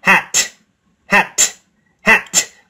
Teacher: For hat, make the last T sound very strong. Feel the air coming out.